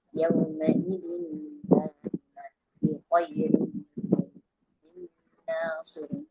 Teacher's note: the ghannah of the noon sakin is not pronounced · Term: complete idgham